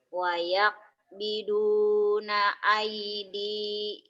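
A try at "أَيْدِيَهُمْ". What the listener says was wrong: Aidiyahum nggak ada yang panjang. Wayaqbiduna aidiyahum. Lin ya kalau lin nggak panjang. Wayaqbiduna aidiyahum.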